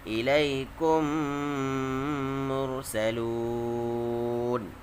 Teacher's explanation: میم ساکن کے بعد میم آئے تو میم کو میم سے ملا کر گنہ کے ساتھ پڑھا جائے گا۔